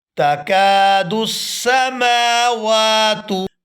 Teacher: मीम को और वाव को खड़ी ज़बर की वजह से खींचकर अदा किया जाएगा